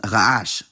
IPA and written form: ʁ̞aˈʡaʃ (make noise)